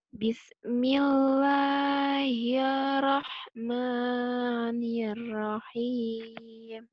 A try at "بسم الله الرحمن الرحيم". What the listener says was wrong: Ya, tapi nir yang pertama kurang masuk ke ra. Coba lepas. Jaro, tengah lidahnya. Tengah lidahnya dirapatkan sama langit langit.